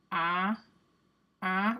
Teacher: a nasalized ah sound would be like ah, right? Because it's ah, but it's in the nose.